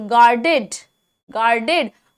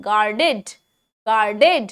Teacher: अच्छा, इसमें आर जो है ना, उसका बहुत स्लो साउंड लीजिएगा. आर ज्यादातर ऐसे मामलों में साइलेंट हो जाता है